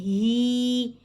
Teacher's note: یا مدہ کو حرکتین مقدار کھینچ کے پڑھیں گے